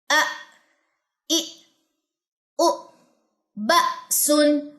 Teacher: حمزہ پہ ویسے ہی جھٹکا ہوتا ہے, حمزہ جزم پہ